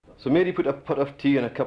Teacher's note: And the T's are very dental.